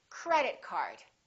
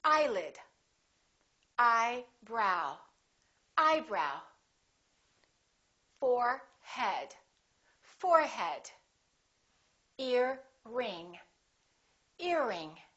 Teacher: we stress the first word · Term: compound nouns